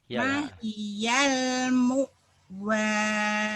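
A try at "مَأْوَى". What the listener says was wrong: Bukan mu tapi barisnya patah. Ma'wa.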